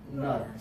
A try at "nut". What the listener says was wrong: Pressure in your stomach is better, okay? Give me more pressure. Okay, gotta have the pressure. If we decide No pressure, we're accidentally gonna say not.